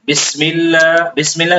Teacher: اعوذ باللہ اور بسم اللہ میں جو اللہ کا لام آ رہا ہے اس کو موٹا نہیں پڑھنا